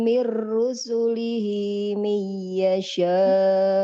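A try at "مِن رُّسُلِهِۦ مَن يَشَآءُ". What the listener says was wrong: Bukan mi. Ma. Man yasha.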